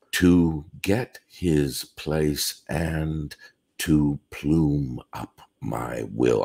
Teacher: the five strong syllables in this line are to get place plume will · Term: strong stresses